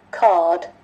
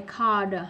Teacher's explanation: Và phiên âm của nó không có âm R luôn nha mọi người.